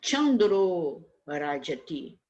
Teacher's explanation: O R está nas cerebrais, né? O R consoante, ele é sonoro. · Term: consoante sonora